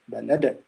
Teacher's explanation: this is قلقلة كبرى strong vibration